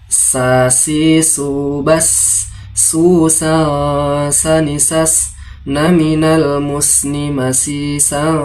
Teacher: makhrajul huruf sin berada di ujung lidah bersama lapisan bagian dalam gigi-gigi seri bagian bawah.